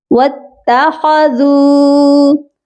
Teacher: ذال نرم حرف ہے، اس کو ہم نے نرمی سے بھی پڑھنا ہے اور اس کو ہم لمبا کر کے پڑھیں گے کیونکہ اس کے ساتھ بھی واو مدہ ہے